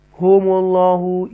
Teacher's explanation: تفخیم کے ساتھ اللہ کے نام کو پڑھیں گے کیونکہ پیش ہے اس سے پہلے